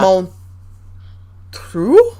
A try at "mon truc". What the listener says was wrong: Yeah, mon truc, c'est ça. We do pronounce the C for once.